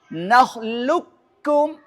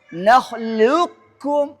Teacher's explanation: Jadi saat kita idghamkan ke kaf, sifat istilahnya huruf qof masih tersisa, terdengar dalam bacaan. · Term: idgham naqis